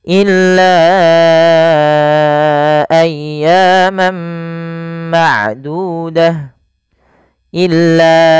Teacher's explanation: panjangkan lanya sepanjang empat harakat karena i ada bacaan Mad Jaiz munfasil